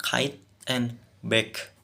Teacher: Memblokir udara dengan bagian belakang lidah menyentuh langit-langit lunak.